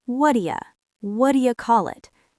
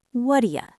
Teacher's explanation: Let us break down the phonetics of this phrase, because the way native speakers say it is very blended together. We do not pronounce the hard T in what. We blend the words so it sounds almost like one long word.